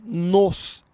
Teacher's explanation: pronome reflexivo aqui seria nos é um som fechado então a gente pronuncia os dois um depois do outro nós